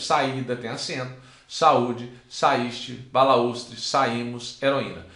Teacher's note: Observem que saída eu tenho encontro de duas vogais, só que o A fica numa sílaba e o I fica em outra sílaba. Então nós chamamos isso aqui de hiato.